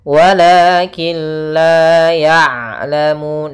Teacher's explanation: daripada makhrajnya huruf ain yaitu tengah tenggorokan kita